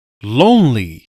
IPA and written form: ˈloʊnli (lonely)